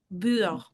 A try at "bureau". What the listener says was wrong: And with that R, that's hard, right? Keep it soft for the R. It's better to underdo the R than to overdo it by accident.